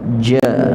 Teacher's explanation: wasatil lisan, bahagian pertengahan lidah yang kena tolak ke atas